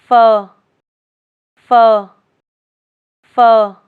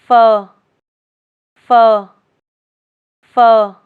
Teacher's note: Place your upper teeth on your lower lip, then release the sound with a light puff of air.